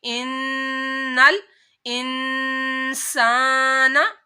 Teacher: नून मुशद्दद है, नून के ऊपर गुन्ना करना है।